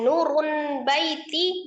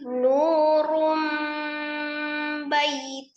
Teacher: Jadi selain ee dirubah nun sukunnya menjadi mim sukun harus disertai dengan ghunah dengung yang sempurna atau kamilah. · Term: iqlab, iklab